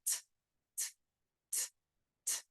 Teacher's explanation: my vocal cords are not vibrating that's an unvoiced sound